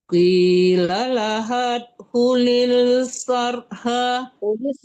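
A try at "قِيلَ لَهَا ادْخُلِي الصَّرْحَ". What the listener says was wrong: Kulis langsung kulis bukan kulil ya. Kulis sarah falam kalau mau diterusin. Kalau tidak mau diterusin kulis sarah. Matikan roh, matikan ha.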